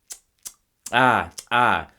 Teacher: the dental click ah ah which is like when you disapprove of something that your kid did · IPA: ǀ